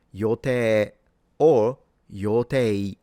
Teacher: For those who are into pitch, it's hairband pattern, low to high and stays high. Forget the pitch, just don't say Yotai.